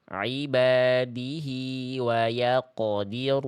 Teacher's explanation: qof sukun apapun keadaannya ketika qof sukun dia harus tebal ya